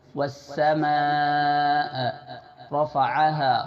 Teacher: را کو موٹا پڑھیں گے، را کے اوپر زبر ہے